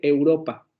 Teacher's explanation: Tenemos una vocal media, vean, una vocal media, la semicerrada anterior no labializada, que está en la zona media.